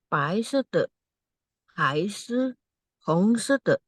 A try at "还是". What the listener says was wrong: ya, 还是, 是nya ditekan Bu ya. 还是,